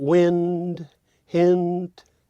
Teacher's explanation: It's probably the most perfectly related, in terms of perfect rhyme, strong family rhyme, because it contains the nasal N and then simply tags with the plosive